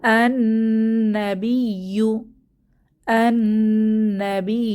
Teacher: আল আমরু আল আয়াতি অর্থ নিদর্শনসমূহ বা আয়াতসমূহ এরপর আন্নাবিয়ু আন্নাবিয়ু এখানে শামসি হরফ আসার কারণে লামের উচ্চারণ হচ্ছে না